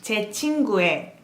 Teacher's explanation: Only when it's possessive, like apostrophe S, you're gonna pronounce it as 에.